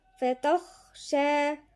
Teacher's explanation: إلى ربك، الراء هنا مفخمة والباء مشددة ساكن ومتحرك، بعديها فتخشى يبقى الخاء هنا ايه؟ مفخمة، ونقف عليها شوية لأن في همس جريان نفس